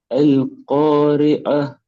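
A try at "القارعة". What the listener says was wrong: அந்த ஏண்டு வாரது மாற்றுங்க. அல் காரி அ. அந்த என்ன செய்யுதுன்னா தொண்டை முன்னுக்கு வருது உங்களுக்கு. அல் காரி அ என்கிறது பிள்ளை.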